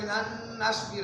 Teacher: آگے دیکھیں یہاں پہ لن نصبر ہے، اصل میں تھا لن نصبر، نون دو دفعہ ہے، ایک ہی دفعہ نون پڑھا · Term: ادغام